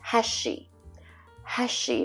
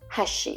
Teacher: when I say heshi I'm pushing air out you can hear it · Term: aspirated h